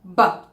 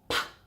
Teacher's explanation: we use our vocal cords to make sound to come out, and the P sound, we don't use any voicing. So it's essentially like a whispered sound. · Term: voiced sound